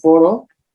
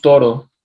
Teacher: En la primera estamos articulándolo con los labios, cerrando los dos labios, pegándolos al máximo, mientras que en la segunda estamos articulándolo con la lengua.